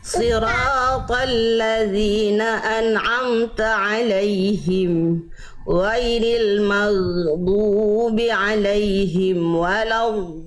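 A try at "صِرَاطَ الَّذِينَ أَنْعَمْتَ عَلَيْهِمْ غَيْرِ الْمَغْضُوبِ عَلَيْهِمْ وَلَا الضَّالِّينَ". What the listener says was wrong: Do-nya panjangkan lagi Bunda. Do mad lazim, dia panjang, 6 harokat.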